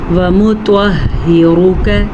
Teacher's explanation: را کو پر پڑھنا ہے اور کاف باریک پڑھا جائے گا